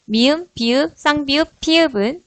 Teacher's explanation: 두 입술이 닿았다가 떨어지며 소리가 납니다.